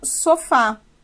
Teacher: dizer que ela tem acento na última sílaba e sim que a sua sílaba mais forte a sua vogal mais forte é a última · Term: oxítona